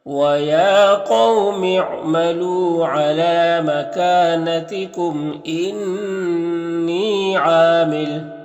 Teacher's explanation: ایک الف کے برابر کھینچیں گے، میم اظہار شفوی ہو رہا ہے. انی میں نون مشدد غنہ ہوگا، اور یا مدہ ہے تو ایک الف کے برابر کھینچیں گے، اور عین میں بھی الف مدہ ہے، تو اس طرح سے پڑھیں گے.